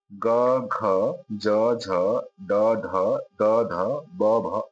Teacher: ग घ झ ड ध त ध ब भ आदि ये सब सघोष कहलाते हैं।